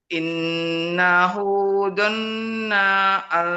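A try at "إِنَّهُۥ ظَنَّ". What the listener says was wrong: Nanya jangan panjang. Donna al. Innahu donna allayyahur. Donna al. Donna allay.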